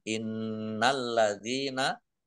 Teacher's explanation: Nun tasdid dibaca gunah atau mendengung ditahan biar tampak dengungannya